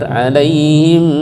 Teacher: mim ketemu mim dibaca idgham mimi, dengung tahan sebentar